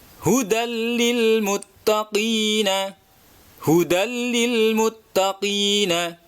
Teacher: Tanwin berupa fathatain bertemu dengan lam, maka suara harusnya hudan itu melebur menjadi suara lam.